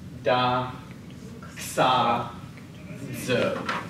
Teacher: So the first syllable is da. This is the stressed syllable.